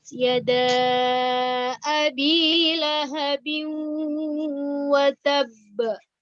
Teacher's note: Ba di situ adalah sebagai huruf qalqalah karena dia berada di ujung kalimat ya.